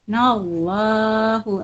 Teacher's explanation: Nallahu lam jalalah dibaca takhim, tebal.